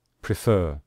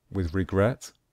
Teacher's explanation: With regret, we stress the last syllable, the final syllable. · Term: stress the final syllable